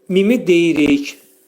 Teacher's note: Mimi dedikdə ağız yumulur və mim hərfi şəfəvi dodaq hərfidir. Mim hərfini izhar etdik.